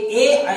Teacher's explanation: आपके ए ऐ जो हैं वो तालु और कंठ से बोले जाते हैं, तालु और कंठ से, तो इनको कंठ तालव्य से कहते हैं, कंठ तालव्य कहते हैं।